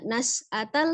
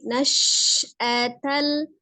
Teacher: huruf shin memiliki sifat tafassi ya, atau menyebar. Jadi jangan dibaca nas'atal saja, tapi nash'atal ula, u-nya 2 harakat, ada waw sukun sebelumnya dhammah, kemudian la-nya juga 2 harakat.